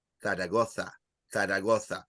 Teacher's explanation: And number two is when you say the Z. In Spain, they say also the TH sound.